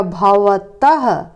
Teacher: इसे विसर्ग कहते हैं इसका उच्चारण ह के तरह किया जाता है